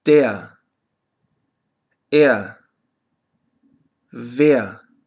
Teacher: ein R wird nicht gesprochen sondern nur a